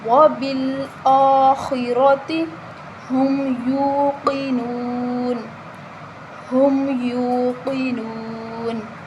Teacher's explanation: یا کے آگے واو مدہ ہے، اس کو ہم ایک الف کے برابر لمبا کریں گے ، قاف کو موٹا پڑھا جائے گا، ٹھیک ہے، نون کے